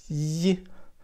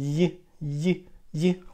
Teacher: Usually, y sound, it's in the middle. It's produced in the middle of the tongue and with the middle also in the middle of the mouth. And also, we touch in the middle with the middle of the tongue.